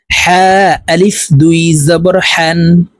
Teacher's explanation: হা হরফ হলকের মধ্যখান থেকে উচ্চারণ হবে কারণ হার মাখরাজ হলকের মধ্যখান থেকে হবে হা আলিফ দুই জবর